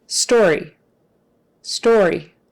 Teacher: if you don't get the r in there it'll almost turn into a w